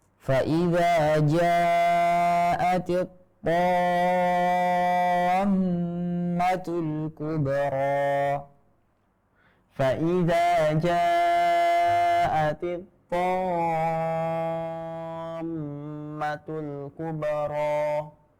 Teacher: Kemudian ini huruf to yang bertasydid dan setelahnya ada alif. Ini adalah derajat yang paling tebal, yaitu huruf to yang berharokat fathah, kemudian setelahnya ada alif. Dan ini matnya mat lazim.